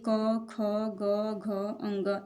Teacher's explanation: क वर्ग के जितने भी वर्ण हैं वो सभी कंठ व्यंजन कहलाते हैं।